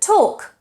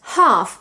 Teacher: You can't say talk with an L. The L is silent.